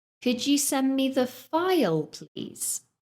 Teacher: the second request sounded more polite because I used a rising intonation